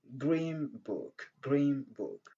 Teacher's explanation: Donc, l'assimilation du son n suivi par le son p ou bien le son b. Quand vous avez le son n, donc avant un mot qui commence par le son p ou bien le son b, généralement le son n a tendance à devenir m